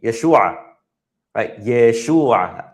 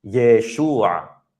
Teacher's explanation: We drag out, remember, drag out that a sound.